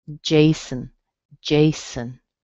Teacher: We have the strong J, and the O on the end is a schwa, so it sounds like Jason.